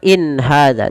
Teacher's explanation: Tidak ada penahanan in ya, tapi dia jelas saja. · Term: izhar halqi